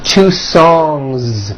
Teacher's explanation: Song ends with a voiced NG sound.